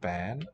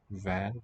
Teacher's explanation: The mutation, the basic forms for both these words have a plain B. But in this particular type of phrase, in this case, they're going to mutate to a V.